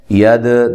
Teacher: دال ساکنہ کو ہلا کر پڑھنا ہے. ید د یہ حروف قلقلہ میں سے ہے.